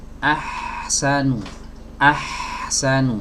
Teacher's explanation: huruf H memiliki sifat rokhowah harus mengalir